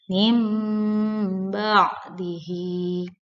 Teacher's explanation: Iklab ialah nun sukun atau tanwin yang bertemu dengan huruf ba. Cara bacanya didengungkan atau ditekan yang lama.